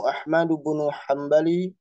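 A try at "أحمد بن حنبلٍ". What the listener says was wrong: Hanbalin, Hanbalin ditanwinkan.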